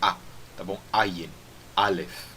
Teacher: hoje em dia é pronunciado da mesma forma que nem o Aleph, e os dois são pronunciados com aquela parada glotal